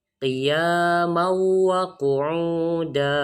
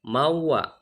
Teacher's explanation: Karena ada tanwin fathah bertemu dengan huruf waw, dibacanya dimasukkan. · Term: idgham bi gunnah